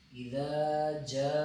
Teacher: تو اذا اس کو تھوڑا سا لمبا، اذا نہیں پڑھنا، جیسے ہم زبر کو پڑھتے ہیں تھوڑا سا لمبا کریں، اذا، زبر کے حرکت کے بمقابلے اس کو لمبا کرنا ہے، یعنی زبر کے 2 حرکت ہم نے پڑھنے، اذا۔ اب جاء، اس پہ یہاں پہ مد منفصل ہے، تو اس کو ہم نے کیا کرنا ہے، زیادہ لمبا کرنا ہے، 5 الف کی بمقدار